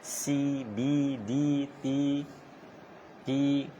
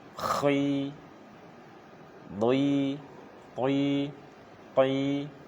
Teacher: untuk huruf isti'la ini memang ketika kasroh pun dia tetap harus tebal, tetap jangan senyum, biar terjaga ketebalannya